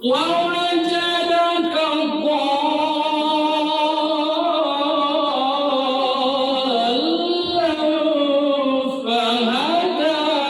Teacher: Ini mad lazim musaqqal kalimi, mad bertemu dengan huruf bertasydid panjangnya 6.